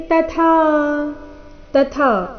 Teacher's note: ಕ್ಷೇತ್ರಂ ಕ್ಷೇತ್ರೀ ತಥಾ, ತಥಾ ಇಲ್ಲಿ ಮೊದಲು ತ ಅಲ್ಪ ಪ್ರಾಣ, ನಂತರ ಥ ಮಹಾಪ್ರಾಣ ದೀರ್ಘ